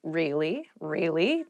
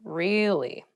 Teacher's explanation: to show you were interested in a conversation with upward intonation